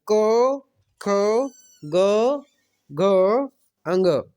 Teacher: तो अ, आ, अह और क वर्ग और ह, ये जो है कंठ से उच्चरित ध्वनियां है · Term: कंठीय